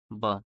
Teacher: ब की बात करें तो ओष्ठ अल्प प्राण घोष